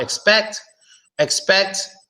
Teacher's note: you barely hear the first e but the second you definitely hear it